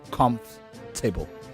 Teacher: when it transits from comfort to comfortable, the second O and R becomes a bit of a throwaway. So some would regard it as what you call a schwa, but indeed it's actually a superscript, which is a tiny little E turned upside down that sits on top like that.